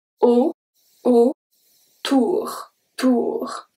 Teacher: it makes the sound of a soft O, an open O